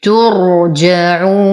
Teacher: نفخم الراء نتم ضمة التاء. نقفل مخرج الجيم نقف على النون بالبينية ولدينا مد عارض للسكون 2 4 6 حركات.